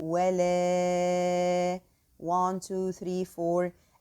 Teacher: the first is the prolonging of the alif that carries the wavy sign and followed by hamza. So the prolonging here should be 4 counts.